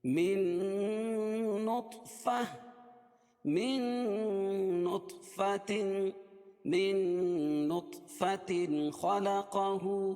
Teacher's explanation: یومن ادغام مع الغنہ ہوگا. نط طا پر قلقلہ ہوگا، کیونکہ حروف قلقلہ کے 5 حرفوں میں سے طا بھی ہے، اور اس کے اوپر جزم بھی ہے